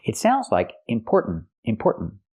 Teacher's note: but there's a stop T at the end important make that stop